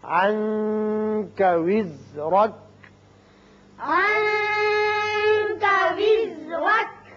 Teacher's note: یہاں نون کے بعد کاف حروف اخفا میں سے ہے، یہاں اخفا ہوگا نون پہ